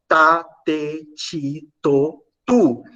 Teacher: a ponta da língua ela vai encostar nos alvéolos Então esse T aí será uma alveolar também tá vocês podem